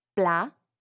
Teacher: Notice how the final T is not pronounced. That's because in French, generally, if a word ends with a consonant, it's silent.